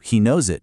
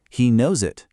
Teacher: That s at the end of a verb for he, she, or it, it almost always links to the next word if it's a vowel. So, he knows it becomes one smooth sound.